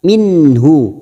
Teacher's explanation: Nun bertemu ha dibaca jelas tanpa mendengung, namanya bacaan idhar halqi